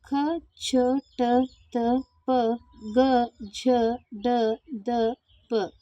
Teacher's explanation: ಕಡಿಮೆ ಉಸಿರಿನಿಂದ ಉಚ್ಚರಿಸಲಾಗುವ ವ್ಯಂಜನಗಳು ಅಲ್ಪ ಪ್ರಾಣಾಕ್ಷರಗಳಾಗಿವೆ